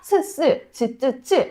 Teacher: 근데 아까 말씀드렸던 스스, 츠츠츠 이런 소리들은 모두 이 옆쪽이 입천장에 붙고 가운데가 뚫려 있어야 돼요. 정중이 좀 낮아지면서 여기로 바람을 보내야 하는 이런 소리예요.